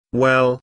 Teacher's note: notice how the vowel is drawn out to sound like we e e eel